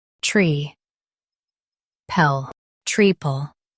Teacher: Stress tree and keep pel light.